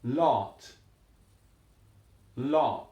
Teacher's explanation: there's a rounding to that at the back a rounding to many of these and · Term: rounded sound